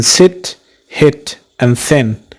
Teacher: this is a front closed vowel the lips have a spread shape